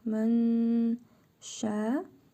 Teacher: Burnumuzda tələffüz edirik nun hərfini. İhva qaydasıdır. Və bir əlif miqdarı uzadırıq.